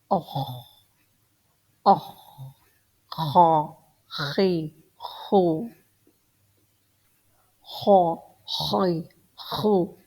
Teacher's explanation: It's pronounced from the upper throat. It means from Adrul Halq. · Kha makes the maximum resistance in your throat.